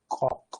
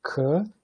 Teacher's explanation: tem um ponto de articulação uvular, que é logo depois do ponto velar. Então seria alguma coisa como ko.